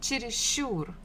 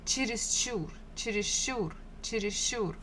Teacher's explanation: stress falls on the final syllable